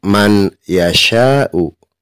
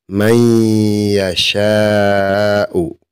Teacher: Maka kita tidak boleh membaca man yasha'u, tetapi harus idgham, dimasukkan dari ma ke huruf ya. Jadi seolah-olah nunnya hilang. May yasha'u. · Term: idgham bi gunnah